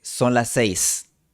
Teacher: Il serait artificiel de prononcer ['son las 'sejs]. Es más natural fusionar las dos /s/ Il est plus naturel de fusionner les deux /s/ en una [s] ligeramente larga en un o de duración normal. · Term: fusión de vocales iguales